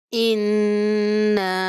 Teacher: نون مشدد بھی ہے اور مد بھی آ رہی ہے، تو اس کو سختی کے ساتھ اور غنہ کرتے ہوئے ادا کریں گے، انا۔ اس چھوٹی مد کو 3 الف کے برابر ہم لمبا کریں گے، انا۔